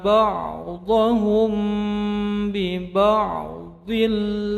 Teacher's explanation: mim sukun bertemu ba menjadi ihfa safawi panjang 2 harokat